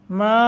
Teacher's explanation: मा मद्द मुनफसल है, लंबा करके पढ़ेंगे।